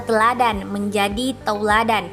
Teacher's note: perubahan bunyi vokal tunggal monoftong menjadi dua bunyi vokal rangkap diftong secara berurutan perubahan dari vokal e tunggal ke vokal rangkap ini masih diucapkan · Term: diftonisasi